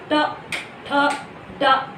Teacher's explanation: जीभ जो है ये दांत के ऊपर और तालू के सामने आकर के टकराती है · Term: मूर्धा